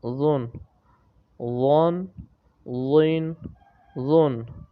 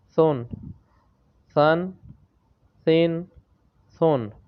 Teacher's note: ذال، ضا اور ثا یہ تینوں جب بھی پڑھے جاتے ہیں تو ان کو بغیر سیٹی سے پڑھا جاتا ہے